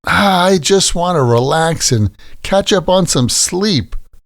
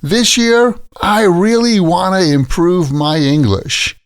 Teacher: we generally pronounce want to as wanna.